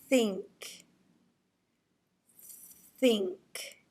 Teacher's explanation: putting our tongue in between our teeth. And then you are going to blow air out of your mouth, shooting it forward. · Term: TH sound